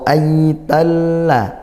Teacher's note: rnya fathah kita baca tafkhim tebal pangkal lidah naikkan